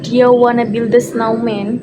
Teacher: Example one is do you becomes dia, and want to becomes wanna, and build a becomes builda. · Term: reduction